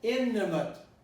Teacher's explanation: when you have the na and the ta together, you eliminate one of them.